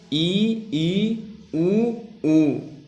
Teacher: ऐसे स्वर जिनके उच्चारण में मुख लगभग बंद रहता है ऐसे स्वरों को संवृत्त स्वर कहते हैं।